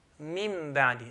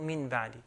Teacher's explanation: when nun sakina meets a ba, the nun sakina changes to mim.